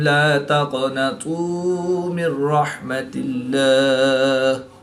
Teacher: قاف حروف مستعلیہ میں سے ہے تو اس کو پورے موٹا پڑھیں